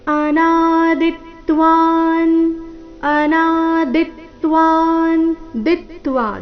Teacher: ದಿತ್ವ ದಿ ಮೇಲೆ ಆಘಾತ